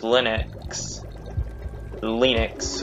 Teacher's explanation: in his in this recording he pronounces linux linux with a with a short but close unrounded front vowel